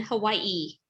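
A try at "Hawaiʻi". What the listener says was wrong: just turn the W into a V. That's how you would properly pronounce it.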